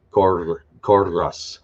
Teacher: use the Spanish rolled R for the double R